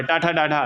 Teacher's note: ठ ठा मूर्धन ध्वनि के अंतर्गत आता है